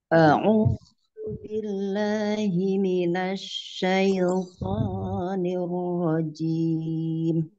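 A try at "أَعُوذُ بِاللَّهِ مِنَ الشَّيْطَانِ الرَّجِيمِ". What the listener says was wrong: Asyai, jangan buru-buru. Dikasih panjang lebih ya dari satu harokat, tetapi nggak boleh lebih dari dua harokat. Asyai, jadi i-nya jelas, bukan syaito, syaito, enggak.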